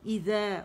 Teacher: زبان کی ٹپ جب جا کے سامنے کے دو اوپر دانتوں کے ایجز پہ لگے گی تو ذیل ادا ہوتا ہے